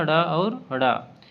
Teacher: अब है द्विगुण व्यंजन या उत्क्षिप्त व्यंजन। जीभ ऊपर उठकर झटके से नीचे गिरती है। इस प्रकार इन व्यंजनों का उच्चारण होता है।